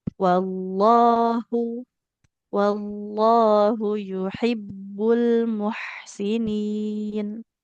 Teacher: Lafaz Allah itu H-nya tidak panjang ya.